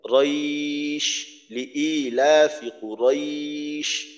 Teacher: তো লিনের হরফ তারপরে শিন, শিনে আমরা ওয়াকফ করি, তো এখানে একালিফ টান দিয়ে পড়তে হয় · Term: মাদ্দে লিন